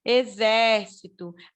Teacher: a sílaba forte é a antepenúltima